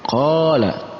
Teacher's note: ada qaf yang berharokat fathah dan bertemu dengan alif, maka masuk dalam kategori mad tabi'i, dibaca panjang 2 harakat